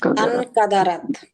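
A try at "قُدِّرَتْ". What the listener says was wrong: না, এটা আন হবে না তো, কি ছিল, 3 নম্বর ইয়েতে কি, এটা হবে ইন কাদারাত,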